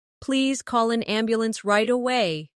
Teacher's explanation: Stress right away so the listener understands the urgency.